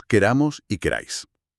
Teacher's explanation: al decir nosotros, la palabra se alarga y el acento se desplaza hacia el final, hacia la terminación. Ah, entonces la raíz de la palabra se libera de la presión.